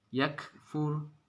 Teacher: harokatnya sukun itu dibaca desis